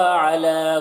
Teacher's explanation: علی لام میں کھڑا زبر ہے، 1 الف کے برابر کھینچ کر پڑھیں گے